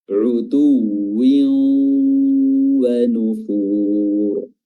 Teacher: Setelahnya hukumnya adalah idgham bi gunnah, memasukkan tanwin ke waw setelahnya disertai dengan gunnah, suara dengung